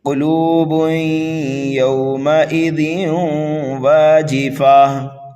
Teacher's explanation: قاف کو پر پڑھیں گے، لام کو واو مدہ کی وجہ سے کھینچ کر کے پڑھیں گے